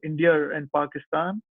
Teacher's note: So when you say India and Pakistan, in RP they insert an R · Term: intrusive R